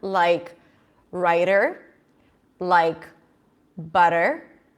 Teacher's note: T's in the middle of the word between vowels are flap T's or D's, right? It's the same sound,